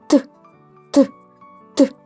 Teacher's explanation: Не можна ні потягнути ні проспівати вони ніби вибухають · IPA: [т]